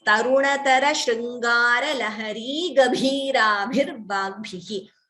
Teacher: Here we can take a pause. So Bhi, Bhi and Bhi, all are Mahapranas.